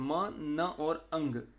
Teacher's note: हवा जो होती है वो क्या होती है, नेजल पैसेज जो होता है वो खुल जाता है, तो हवा नाक से निकलती है, मुंह से नहीं निकल पाती है। उस समय जो साउंड क्रिएट होते हैं वो कहलाते हैं नेजल साउंड्स।